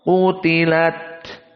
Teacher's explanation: Dan qutilat di sini qaf dalam keadaan mufakhamah. Qutilat, namun taknya tasdid.